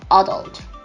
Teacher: it is localized on the second syllable and it is pronounced adult